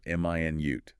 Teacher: This one depends on stress, >> right? Stress on the first syllable